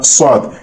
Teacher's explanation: ان کی صفت ہے سیٹی کی آواز کے ساتھ پڑھنا ، یہ تینوں حروف سیٹی کی آواز